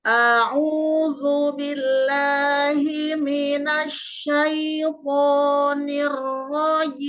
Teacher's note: huruf hamzah itu makhraj hurufnya di tenggorokan bawah